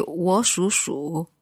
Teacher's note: So the first 我 was kind of like a second tone, yeah?